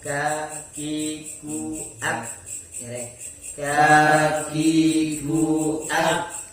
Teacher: Kaf ini pangkal lidah cuma tempelannya pada langit-langit mulut yang keras.